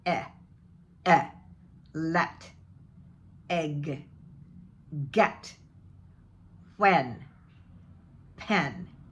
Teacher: it's a short e more closed mouth shorter form of ah tongue is up and back and forward eh eh let egg